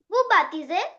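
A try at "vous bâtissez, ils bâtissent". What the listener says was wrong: Just to say baptisou, no baptism, if we had a one S, we would say baptism. S between two vowels is pronounced Z. But here we have two S, double S, so baptisson. Baptisson, baptisser, baptisse.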